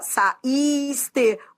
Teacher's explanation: ia fraco tá bom saíste leva assento por qu ó saiste o i segunda vogal do iato e é forte · o I é a segunda vogal do hiato e é forte. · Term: tônico